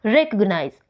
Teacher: जो बाकी हैं उनके ऊपर इतना मोर एनर्जी या फिर मोर फोर्स नहीं लगाया गया है जितना कि इस फर्स्ट सिलेबल पर लगाया गया है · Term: प्राइमरी एक्सेंट